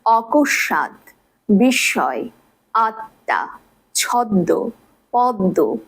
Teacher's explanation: ম ফলা যদি শব্দের মধ্য বা শেষ ব্যঞ্জন বর্ণের সাথে যুক্ত হয়, সেক্ষেত্রে ম ফলা যেই ব্যঞ্জন বর্ণটির সাথে যুক্ত রয়েছে তার দ্বিত্ব উচ্চারণ হয়। এবং যেহেতু ম একটি অনুনাসিক ধ্বনি, তাই দ্বিত্ব উচ্চারিত শেষ ধ্বনিটি কিছুটা নাসিক্য প্রভাবিত হয়।